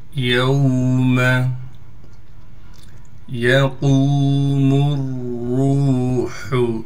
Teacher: قاف کو موٹا کر کے پڑھیں گے، قاف کے بعد واو مدہ ہونے کی وجہ سے قاف کو ایک الف کی مقدار کھینچیں گے۔ میم کو را سے ملائیں گے اس لیے کہ را پر تشدید ہے اور را پر پیش ہونے کی وجہ سے را کو موٹا بھی پڑھیں گے۔